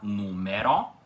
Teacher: as vogais E e O na palavra são pronunciadas com som aberto